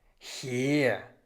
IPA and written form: hiːʁ (hier)